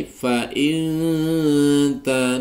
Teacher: Kita akan mulai fa in ta, nun sukun bertemu ta dibaca ikhfa hakiki. Ikhfa berarti samar disertai dengung, sehingga nunnya seakan-akan tidak tampak dengan jelas, samar.